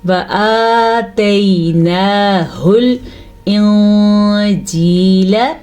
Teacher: نون ساکن کے بعد جیم آیا ہوا ہے جو کہ حروف اخفاء میں سے ہے، تو نون کی آواز کو ہم چھپا کے اور غننے کے ساتھ پڑھیں گے